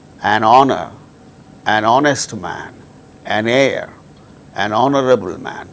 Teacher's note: these words begin with hitch which is a consonant letter but h becomes silent and these words produce initially vowel sound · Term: silent h